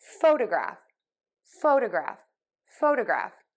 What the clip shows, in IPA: ˈfoʊdəˌɡræf